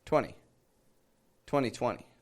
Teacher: And this is the trick to getting that number nice and clear, is not pronouncing the T in there, but rather just the N very quickly